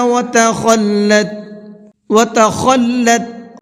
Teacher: خا کو بھی منہ بھر کے پڑھنا ہے